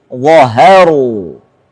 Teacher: Diapit oleh dua yang tebal. Wa sama ra. Haknya harus tipis.